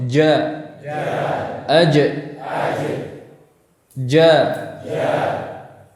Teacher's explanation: Perhatikan pertemuan antara tengah lidah dan langit-langit yang rapat. Perhatikan ini pertemuan yang rapat ya. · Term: huruf jim